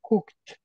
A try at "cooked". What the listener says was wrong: Give me the T. Cooked.